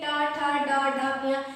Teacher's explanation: टा ठा डा ढा इया, ये आपका मूर्धा से बोला जाता है।